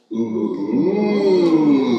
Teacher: there's more echo happening in the back of the mouth, but coming out through the circle of the lips